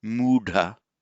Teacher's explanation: h and the th blend together to make an aspirated retroflex, and it also lengthens the vowel.